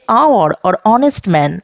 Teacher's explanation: Here the spellings have h at the start, but the h is silent. We don't say hour or honest man. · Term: silent h